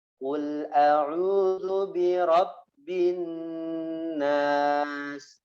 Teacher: Sampai terdengar ada ya suara yang ditahan atau kita rasakan bahwa nun bertasydid dan mim bertasydid ditahan itu sudah benar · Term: gunnah